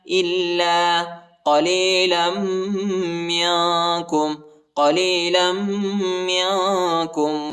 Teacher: حمزہ کو لام کے ساتھ ملائیں گے اور لام کے بعد جو الف آیا ہے اس کو ایک الف کی مقدار تک کھینچیں گے اور لام کو سختی کے ساتھ شدت کے ساتھ پڑھیں گے.